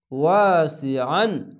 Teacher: ওয়া আলিফ যাবার ওয়া, সিন জের সি, ওয়া সি, আইন আলিফ দুই জাবার আন, ওয়াসি আন, আইনটিকে মোটা করে গলা চিপে পড়বেন